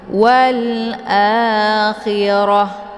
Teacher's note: Maka ketika kita berhenti otomatis kita sukunkan huruf akhir yaitu ta. Nah, ketika kita sukunkan ta-nya, maka yang menjadi bacaannya bukan lagi ta, namun sudah berubah menjadi ha. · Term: ta marbutah